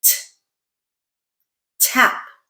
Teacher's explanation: your tongue tip is tapping against that alveolar ridge to make that sound. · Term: alveolar sounds